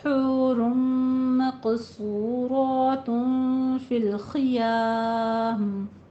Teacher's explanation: حورم میں رو بھی پر ہے لیکن یہاں پہ ادغام مع الغنہ ہو رہا ہے